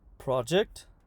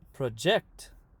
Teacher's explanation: Okay, now, if a verb and a noun have the same spelling, then the noun will have the stress on the front and the verb at the end.